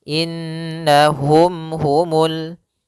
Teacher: mati bertemu dengan ha maka hukumnya kita hukumi dengan izhar syafawi maka mimnya tidak boleh ditahan gunahnya tidak boleh